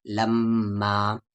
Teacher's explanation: تو اس میں سے ایک زبر ہٹ جاتا ہے، لما، اور یہاں پر میم مشدد ہے یعنی یہاں پر غنہ ہوگا